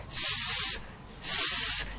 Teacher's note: The tongue, the tip of the tongue is touching the alveolar ridge.